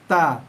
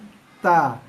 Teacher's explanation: Hujung lidah sentuh belakang gigi. Dia ada tekan sikit.